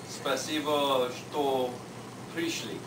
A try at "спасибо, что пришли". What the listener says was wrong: You say спасибо, что пришли. You have an accent on the last letter, but you pronounce it very nice.